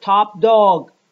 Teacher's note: in the final group, we have a voiceless stop followed by a voice stop. We have top dog, voiceless, followed by da, pa, voiceless, followed by da, which is voiced.